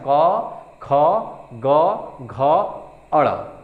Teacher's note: ये कंठ यानी गले से बोला जाता है। तो ये कंठ व्यंजन हो गया।